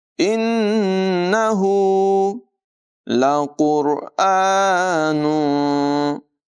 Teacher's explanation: क़ाफ़ की आवाज़ पुर होगी, रा को भी पुर आवाज़ में अदायगी करेंगे